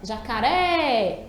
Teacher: tá vendo que a gente demora mais na última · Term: sílaba tônica